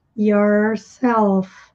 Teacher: Aqui nós temos o r retroflexo do inglês que a língua vira para trás